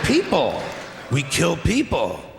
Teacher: the pitch of his voice goes up each time and he takes a couple big pauses